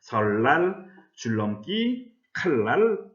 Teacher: 니은은 리을이 앞이나 뒤에서 리을로 발음한다. 유음화라고 할 수 있습니다.